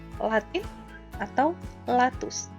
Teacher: Yang selanjutnya adalah liquida atau disebut juga lateral, yaitu bunyi yang dihasilkan dengan mengangkat lidah ke langit-langit, sehingga udara terpaksa diaduk dan keluar melalui kedua sisi.